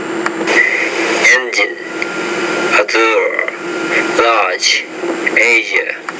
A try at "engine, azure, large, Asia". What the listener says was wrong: Okay, you did the last sound okay, so you know how to make the sound, but it's harder when it's in the middle of the word. That's what I'm saying here. For example, the word measure, Frazier, legion, azure.